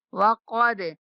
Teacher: وقد قاف موٹا دال پہ کلکلا